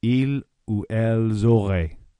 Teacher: Notice how you do pronounce the S with the L because the next word begins with a vowel.